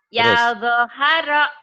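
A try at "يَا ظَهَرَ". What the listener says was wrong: Pendek semua.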